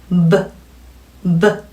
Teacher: B sound 성대 강하게 울려주셔야 되는 자음이었죠.